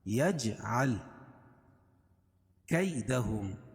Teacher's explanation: یا لین یا ساکن سے پہلے زبر ہے اس لیے یا لین، اس کو نرم آواز کے جلدی پڑھیں گے